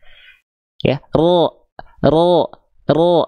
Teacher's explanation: Niat kita vokal A karena fathah itu vokal A keluarnya. Tapi karena ada pangkal lidah ya yang naik, vokal A ketika mau keluar jalurnya kehalangin sama pangkal lidah. Sehingga output keluarnya jadi O. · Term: huruf tebal